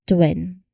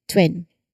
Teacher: this is a t sound blending directly into the w sound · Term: tw cluster